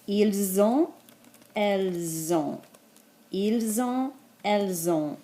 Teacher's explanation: pronounce that with a Z sound so it doesn't get mixed up with the être verb ils sont